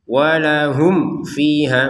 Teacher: Walahum fiha. Mim sukun bertemu fa maka kita baca dengan jelas.